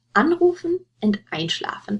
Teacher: And you see the stress is on the prefix.